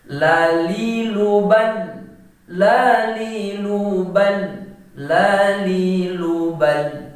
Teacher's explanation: posisi lidah, ujung lidah kita itu berada di antara gusi bagian atas dan langit-langit